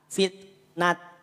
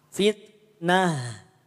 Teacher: ta marbutah harakat tanwin fathah saat waqaf jadi ha dibunyikannya ya tidak dibunyi ta fitnat Tidak tidak fitnat ini ada kaidah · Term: kaidah Badal